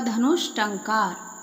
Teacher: तो ऊ और टा का जब मेल होता है तो जो विसर्ग है हमारा धनु, तो विसर्ग के स्थान पर हो जाएगा शा यानी मूर्धन्य शा